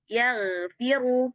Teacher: Ghain di pangkal lidah ini ya, ketika dia sukun itu dia langsung pindah fokusnya ke belakang. Fokusnya pindah ke pangkal lidah.